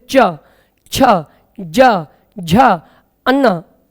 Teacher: तालू को जब जीव टच करेगी स्पर्श करेगी तभी इन पांचों व्यंजनों का उच्चारण होगा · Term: चा वर्ग